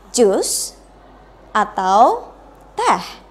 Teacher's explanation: Nah, dari situ kita bisa menjelaskan bahwa intonasinya pasti berbeda. Ketika Anda pengen menyatakan pertanyaan atau sebuah pilihan yang pertama, jus, berarti harus menggunakan raising intonation. Menggunakan intonasinya naik. · Menggunakan intonasinya naik. Tapi kalau mau bilang teh untuk pilihan terakhirnya berarti using drop intonation, berarti intonasinya harus turun.